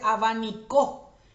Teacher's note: Y ahí la misma palabra, pero cambio el lugar del acento y dice abanicó